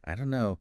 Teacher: Another example is maybe I don't know saying each word separately sounds a bit formal >> right but we often hear it as I don't know the don't and no just merge